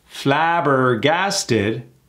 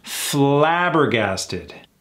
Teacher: find out where the emphasis is and in this case it's that first a